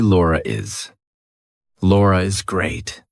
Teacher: if I have to link my name to something else, that's a vowel. I have to put an R in there. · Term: intrusive R